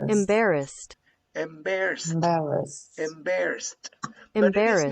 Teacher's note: the final e d sound is pronounced like a final t